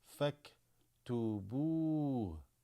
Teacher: This Hamzat al-Wasl drops, goes straight to the kaf here that has a sukoon.